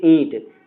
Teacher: ईंट में आपको मुख से भी बोलना पड़ रहा है और नोज का भी प्रयोग होगा। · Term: अनुनासिक